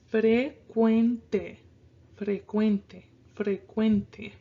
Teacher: So it's frecuente. So again, our emphasis is going to be on this quen part.